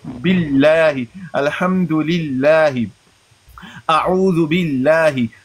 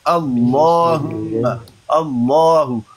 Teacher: جب لفظ اللہ سے پہلے زبر ہو یا پیش ہو اس کو مفخم پڑھا جاتا ہے. اللہ جب اس سے پہلے زیر ہو اس کو باریک پڑھا جاتا ہے، مرقق پڑھا جاتا ہے